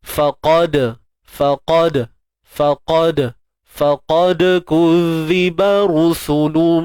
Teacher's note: Huruf dal yang sukun kat sini qalqalah sughra, lantunan kecil je.